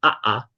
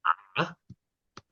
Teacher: the variation of the glottal stop. Sometimes it's reduced to a creak. Instead of saying ah, you would hear ah.